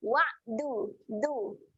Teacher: Makhraj huruf dal, hujung lidah berjumpa dengan belakang gigi atas,